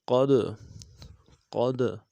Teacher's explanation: دال حرف قلقلہ میں سے جزم ہو، دال کے اوپر تو قلقلہ کریں گے